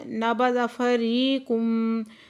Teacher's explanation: ری پہ یا مدہ ہے، دو حرکت کھینچ کے پڑھیں گے۔